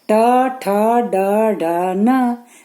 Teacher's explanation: ट यहां से लग रहा है ना, यहां से मूर्धा मतलब यहां से, ट ठ ड लग रहा है ना, यहां से बोला जा रहा है। ट ठ ड ढ न मूर्धा से बोला जाता है, ओठ के थोड़ा अंदर से।